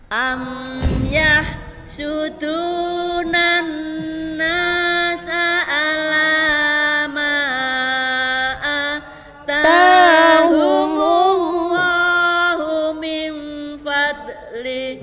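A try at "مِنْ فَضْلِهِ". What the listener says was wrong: Nah, jangan ada fadl, ditahan fadli, fadli, ya. Nah gitu nge, jadi enggak boleh memantul.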